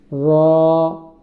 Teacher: রটা বলার সময় একটু মোটা করে বলতে হবে। র জিহ্বার মাঝখানটা একটু ফাঁকা থাকবে নৌকার মত। দুই সাইড দিয়ে উঁচু থাকবে আর মাঝখানে একটু খোঁচা থাকবে। র